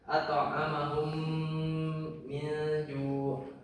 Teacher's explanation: Terus idgham mimi, nah ketika mim mati tersebut bertemu dengan huruf mim, nah, maka dibacanya bagaimana? Ditasdidkan dengan mendengung.